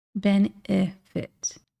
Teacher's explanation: All of those have this reduced E sound. Benefit only has one I, but if you listen closely, that second E is pronounced very similarly to the ending I.